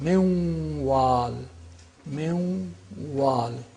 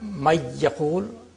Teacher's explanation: With the nasal quality of the noon is retained, and there is idgham, which is naqis, which is incomplete.